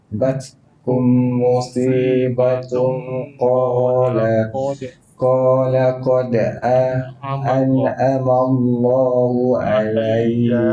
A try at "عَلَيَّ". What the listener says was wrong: Jangan ya dengan panjang.